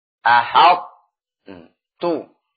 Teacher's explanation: Artinya meskipun diidghamkan tapi sifat ta-nya tetap keluar. Ahad tu. Bukan idgham yang kamil. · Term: idgham naqis